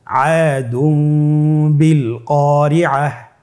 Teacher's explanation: তানবিনকে মিম দ্বারা পরিবর্তন করে গুন্নার সহিত পড়ব